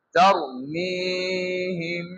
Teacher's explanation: হিম বলে দুই ঠোঁট মিলে থাকবে আর গুণনা করতে হবে, ধরে থাকতে হবে।